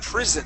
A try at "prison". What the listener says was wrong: make sure this s here it sounds like a z okay um we wouldn't make a a an S sound like that we'd make more of a z sound